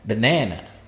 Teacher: Jadi tekanannya itu pada ba. Sedangkan stressing yang benar dalam bahasa Inggris, syllable stressnya di syllable ne ya